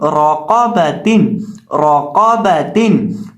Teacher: चूंकि यहाँ रॉ के ऊपर दबर है इसलिए यहाँ हम रॉ को मोटा करके पढ़ेंगे और कॉफ को भी मोटा करके पढ़ेंगे